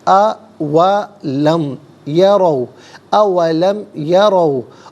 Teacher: را پر زبر ہے، را کو پر کر کے پڑھیں گے